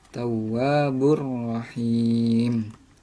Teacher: Nah, jadi cara membacanya huruf tanwin berlebur kepada huruf ro tanpa dengung, karena di sini bila gunnah. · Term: idgham bila gunnah